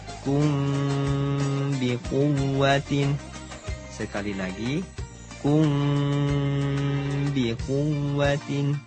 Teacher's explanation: Mim sukun bertemu huruf ba, hukumnya ikhfa syafawi, yaitu menyamarkan bunyi mim sukun dengan cara menempelkan 2 bibir tanpa ditekan disertai dengung seukuran 2 harokat.